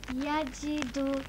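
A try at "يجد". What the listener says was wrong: Yajidu, yeah?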